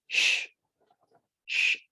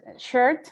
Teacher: Sh is voiceless, and it's a fricative, and it is a palatal or post-alveolar